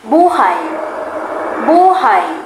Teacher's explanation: Kapag naman ang diin ay nasa huling pantig, nangangahulugan nitong existence.